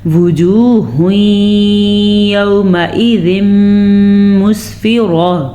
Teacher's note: وجوہ ادغام بالغنہ ہو رہا ہے کیونکہ نون تنوین کے بعد یمون میں سے یا آیا ہوا ہے